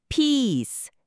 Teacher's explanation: 여기서 중요한 건 피스의 이 소리, 아이 발음이죠. 우리말 이보다 입술을 양옆으로 좀 더 당기고 길게 소리내는 게 포인트래요. 짧게 피스 이렇게 안 되게 조심해야 하고요.